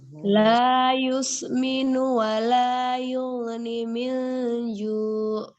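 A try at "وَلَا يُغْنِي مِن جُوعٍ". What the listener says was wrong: Ya, ini ghain sukun dia jangan yugni ya Mbak, tapi ditahan. Yugni min ju.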